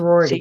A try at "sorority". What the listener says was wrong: You roll your R's.